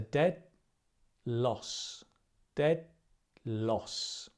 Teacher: Now we don't say dead loss because dead and l, the d and the l, the tongue is in the same, almost the same place. So we keep it there